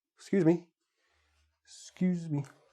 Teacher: sometimes we even drop the initial vowel